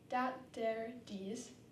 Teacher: Third, if there's an R following a vowel, the R will often be dropped, so nowhere becomes nowhere, and over becomes ova. Fourth, the th sound at the beginning of words will often become a d sound, so dat, dare, dees.